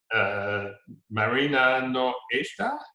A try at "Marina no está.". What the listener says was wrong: You're saying esta. I want you to punch that in. You could carry out that all on the end as long as you want, but make that oral lift there.